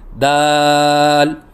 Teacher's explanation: حرف ہے دال، مخرج زبان کی نوک اور ثنائے علیہ کی جڑ، اس سے دال ادا ہوتا ہے، یعنی زبان کی نوک جب اوپر والے سامنے کے دانتوں کی جڑ سے لگے تو اس سے دال ادا ہوتا ہے، جیسے کہ آپ کو اس نقشے میں نظر آ رہا ہے کہ زبان کی نوک ثنائے علیہ کی جڑ سے لگی ہوئی ہے۔